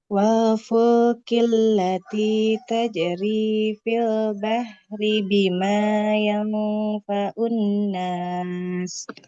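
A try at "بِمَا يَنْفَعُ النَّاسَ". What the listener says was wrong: Bima yang faun huruf ainnya jangan seperti Hamzah. Bima yang faun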